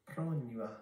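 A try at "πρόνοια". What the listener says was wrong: Pronua. You have to roll your R's in Greek just like you do in Spanish.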